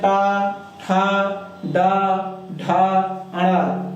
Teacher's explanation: व्यंजन में जो है टा, ठा, डा, ढा, अड़ा, ये जो है मूर्धा के अंतर्गत आते हैं